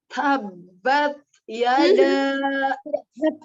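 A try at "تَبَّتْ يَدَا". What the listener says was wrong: Tabbat yada, tabbat, tidak tabbat, tidak ditebalkan. Watab, tabbat, ada alhams di huruf ta ya, tidak tertutup tabat.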